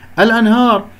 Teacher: النون مع الهاء إظهار لأن الهاء من أحرف الإظهار الستة